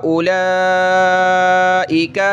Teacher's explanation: یہاں واو نہیں پڑھا جاتا، حمزہ کے بعد ڈائریکٹ لام پڑھیں گے، لام کو کھینچیں گے